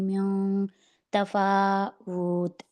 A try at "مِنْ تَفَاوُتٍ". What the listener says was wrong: وت نہیں